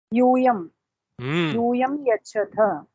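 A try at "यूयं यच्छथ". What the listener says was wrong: Yuyam yachata. You all give. Well done.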